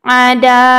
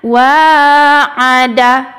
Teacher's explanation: Yang benarnya wa ada, cepat ya, jangan dipanjangkan danya